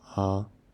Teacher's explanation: it means first tone, and has a flat sound, so it's ah.